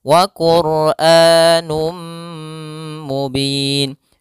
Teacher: hafal Num kembali ada dhammatain bertemu mim yaitu Idam B ghunah masukkan tanwinnya kepada mim dan ditahan